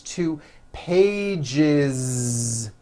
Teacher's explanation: that voiced Z two pages it's not too pages unvoiced no it's two pages with a voiced Z